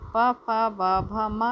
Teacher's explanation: प, फ, ब, भ, म। इनका उच्चारण स्थान है ओठ।